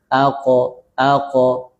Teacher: seakan-akan harakat fathah tapi yang lemah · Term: qalqalah